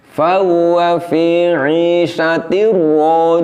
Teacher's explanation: seharusnya getaran pada huruf ro itu lembut dan pendek